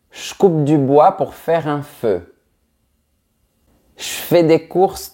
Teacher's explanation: devant les sons k, f, p, s et t, on va souvent dire ch à la place de j. Donc, ça ne vibre pas. En fait, on fait ça parce que c'est plus facile à prononcer de cette manière.